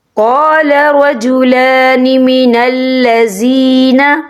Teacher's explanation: یا ساکن ہے، یا ساکن سے پہلے زیر ہے، تو ہم یہاں 2 یا 3 عقد کے برابر کھینچیں گے۔ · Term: مدہ